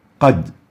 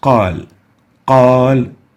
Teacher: Qad has a fatha, but there is no alif, so it has tafkheem, but not as qal